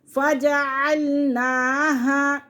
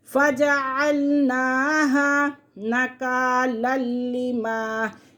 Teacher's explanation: نون کو ایک الف کے برابر کھینچ کے پڑھیں گے کیونکہ نون کے بعد کھڑا زبر ہے